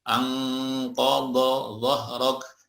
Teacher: Nun bertemu huruf isti'la, qaf, sod ya. Semuanya ikhfa-nya atau gunnahnya menjadi tebal ya.